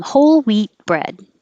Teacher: it's 21 weed 22 we 21 weed 22 we tiny difference you won't hear the d or the t unless there's a vowel after it · you don't really hear a tea at all